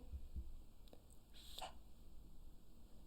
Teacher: This is the unvoiced TH sound. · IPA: θ